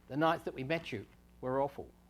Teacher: if the T and the Y occur without a phrase boundary between them they get merged into a kind of a CH sound